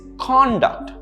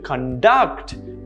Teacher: notice how the stresses in the second syllable